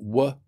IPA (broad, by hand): w